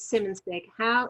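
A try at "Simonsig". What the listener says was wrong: So it's normally the G, the G at the end.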